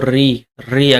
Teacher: री री ध्वनि का जो उच्चारण स्थान आपका याद रखिएगा मूर्धा होता है